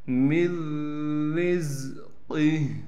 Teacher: نون کو ختم کر دیں گے، میم کو ڈائریکٹ را سے ملائیں گے، را کو باریک کر کے پڑھیں گے، پھر را کو زا سے ملا دیں گے، قاف کو موٹا کر کے پڑھنا ہے، اور گول ہا کے نیچے کڑی زیر ہے، یہ وقف میں ساکن ہو جائے گی۔ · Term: ادغام